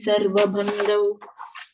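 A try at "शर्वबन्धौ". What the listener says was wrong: And second line, last word, Sha sound, Sharva Bandhau.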